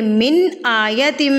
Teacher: अब यहाँ पर देखें नून साकिन, नून साकिन के बाद हमज़ा आ गया तो यहाँ पर इजहार होगा। इजहार कहते हैं नून को आपने ज़ाहिर करके पढ़ना है। मिन आयतिम, ना तो आपने यहाँ पे गुन्ना करना है ना तो आपने इक्फ़ा करना है।